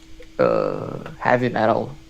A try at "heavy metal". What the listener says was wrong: Ha. You kind of did ha instead of he. Heavy metal.